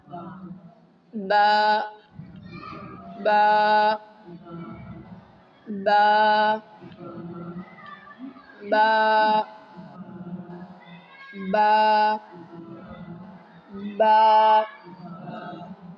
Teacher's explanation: اب غور کریں کہاں سے ادا ہوگا، اندر گیلے والے حصے سے، اندر کے گیلے حصے، دونوں گیلے حصے ہونٹوں کے ملیں گے تو ادا ہوگا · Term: مخرج